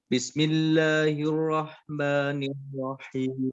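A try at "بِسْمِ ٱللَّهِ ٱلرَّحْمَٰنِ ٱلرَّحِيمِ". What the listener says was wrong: Bismillahnya ada ketukan, ada jeda 1 harokat ya.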